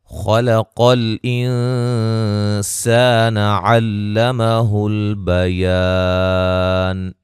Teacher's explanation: خلق الانسان علمہ البیان، خا کو موٹا، قاف کو موٹا، درمیان میں لام کو باریک پڑھیں گے، نون ساکن کا اخفا ہے، سین کو سیٹی سے ادا کریں گے، مد اصلی ہے، یہاں الف مدہ ہے۔